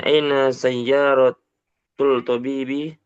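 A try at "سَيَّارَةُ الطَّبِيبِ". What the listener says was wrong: Pakai tasydid ditanya. Sayyarotut tabibi.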